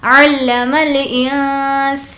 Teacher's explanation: علم الانسان، یہاں پر بھی ہوگا حرف اخفا، نون ساکن کے بعد سین، علم الانسان، سین کو کھینچیں گے کیونکہ کھڑا زبر